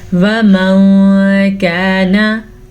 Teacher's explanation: नून साकिन की आवाज़ को छुपाना है और गुन्ने के साथ छुपाना है